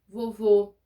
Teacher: o acento circunflexo o som é fechado